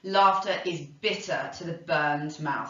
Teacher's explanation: And he says, sir, laughter is bitter to the burned mouth. So we've got this plosive alliteration here, that but sound, really creating that sort of sense of harshness.